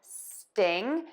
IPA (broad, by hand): stɪŋ & ˈstɪnʤi